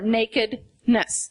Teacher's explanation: nakedness three syllables Accent on the first and third syllable